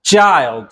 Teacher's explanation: ch waxay isku rogi doontaa oo ah waa t iyo sha oo la isu geeyo